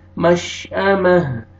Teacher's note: عین نہیں پڑھنا، مشأمہ، تا کو ہاں میں چینج کریں گے، جب سٹاپ کریں گے تو ہا ساکن ہو جائے گا، میم زبر ہا جزم مہ، لاسٹ میں ہا کا ساؤنڈ آئے گا